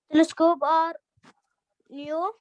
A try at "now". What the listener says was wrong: New or now?